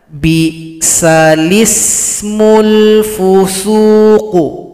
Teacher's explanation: Tapi karena ada naqal, lam yang sukun berubah menjadi lam yang kasroh. Karena huruf hamzah sebelumnya berharokat kasroh, dipindahkan barisnya atau harokat ke huruf lam sukun.